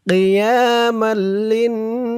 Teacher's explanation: লাম দিয়ে যখন এই তাসদিদ ওলা নুনকে ধরবে তখন ওয়াজিব গুন্না হবে